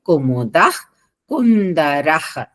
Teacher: కుముదః ద తర్వాత విసర్గలు తర్వాత క ఉంది కాబట్టి పొల్లు హ వస్తుంది